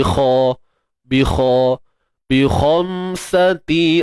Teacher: Kha tebal. Kha jangan lupa ya. Isti'la, angkat pangkal lidah tu.